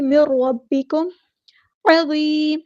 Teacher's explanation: ہو جائے گی، مر ربکم، را یہاں پہ ہیوی لیٹر ہے، با مشدد ہے تو اس کو دو بار پڑھیں گے